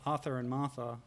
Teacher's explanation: Australian dialect, or not dialect, you know, just the accent, kind of broadens out a lot of vowel sounds